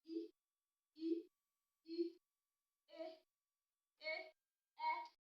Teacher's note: Tá bá pè á rí pé iwájú ahọ́n ó gbéra sókè.